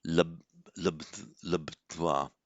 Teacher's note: So the b plus t merge into a bd.